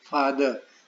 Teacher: तो फा जोर से बोलते हैं, द को हल्के से बोलते हैं, तो वो एक्सेंट कहेंगे फा पर है।